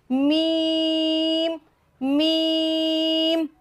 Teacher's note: दोनों होंठों के खुश्की वाले हिस्से को मिलने से मीम अदा हो जाएगा